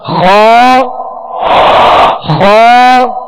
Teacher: اگر احتیاط نہ کی جائے کیونکہ یہ ایک ہی مخرج سے ادا ہوتے ہیں تو کہیں ایسا نہ ہو کہ خا غائن بن جائے اور غائن خا بن جائے، اس چیز کا احتیاط کیا جائے. لہذا خا کو اوپر والے حصے سے ادا کرنا ہے اور پر پڑھنا ہے، موٹا پڑھنا ہے